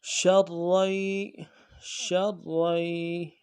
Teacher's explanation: شین را زبر شر، شر، را یا زبر ری، را یا زبر ری، را کے بعد الف مدہ ہے، اس کو نہیں پڑھیں گے اس وجہ سے کہ آگے تشدید ہے، دو یا ہے، پہلا یا ساکن ہے، الف مدہ بھی ساکن یا بھی ساکن، دونوں کو نہیں پڑھا جائے گا، ایک کو یعنی الف مدہ چھوڑ دیں گے، یا کو پڑھیں گے۔ شرری، شرری، یا زبر یا، یا زبر یا، شریا، شریا، را زبر را، را زبر را، شریرا، شریرا، ہا الٹا پیش ہوں، الٹا پیش ہے ایک الف مقدار میں کھینچیں گے۔